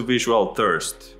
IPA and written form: ˈvɪʒ u əl θɜrst (visualthirst)